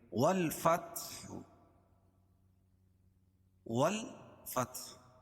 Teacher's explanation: الف لام کے بعد حروف قمری کے 14 حرفوں میں سے فا ہے، اس لیے یہاں لام پڑھی جا رہی ہے۔